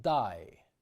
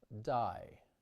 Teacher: in Russian more of the tongue is pressed against the teeth before the release and for a slightly longer time